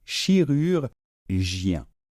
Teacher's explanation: ce n'est pas un OU, c'est un petit peu comme un OU et en même temps vous essayez de faire un I. Donc ça nous fait U, d'accord.